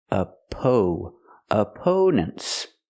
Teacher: We use a long o sound like no and go. for the second syllable